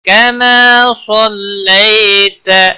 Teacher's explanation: اللہم صل علی محمد وعلی آل محمد کما صلیت کما الف مدہ ہے، ایک الف کے برابر کھینچ کر پڑھیں گے۔ صلیت صاد کو موٹا پڑھیں گے، لئی یالین ہے، تھوڑا نرمی کے ساتھ کھینچ کر ادا کریں گے، تا کو کھینچنا نہیں۔